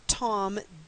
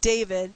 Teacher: lingua alveolar that is tongue and the alveolar Ridge